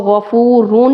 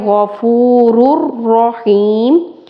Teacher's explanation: इसको गफूरुन नहीं कहना, यानी कि तनवीन के आखिर में जो नून साकिन की आवाज़ है वो नहीं, इदगाम करेंगे, रॉ को रॉ से मिलाएंगे